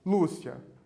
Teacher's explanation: O Lu é a penúltima sílaba, é a sílaba tônica.